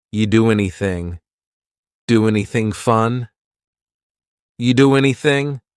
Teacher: And then the next word, anything, we sometimes drop the A, and we're going to push those two together because there's two N sounds side by side.